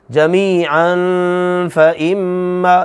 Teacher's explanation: میم پر شد آ گئی، غنہ ہو رہا ہے